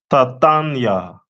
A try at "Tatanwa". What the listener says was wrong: Close. The last letter. Tatanwa.